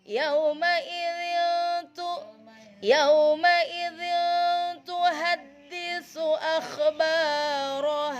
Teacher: Tulisannya dzin tu, bacanya samar. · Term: ikhfa